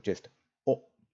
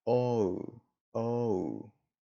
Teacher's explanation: We don't have O like we do in English. We just have the O. It's a short sound, a short, sharp sound. In English, the O is actually an O and a U combined.